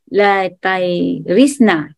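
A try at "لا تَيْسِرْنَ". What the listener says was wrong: La taisirna bukan la tairisna. Ya, bagus.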